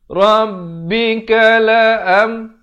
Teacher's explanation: Bunyi saja am, izhar syafawi, jangan panjang.